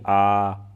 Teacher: विवृत में क्या होगा कि मुंह जो है आपका पूरा खुल जाएगा